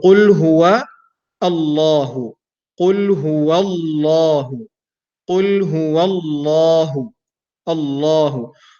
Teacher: So the word Allah here is heavy because the last vowel that is coming before the word Allah is a fatha. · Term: heavy manner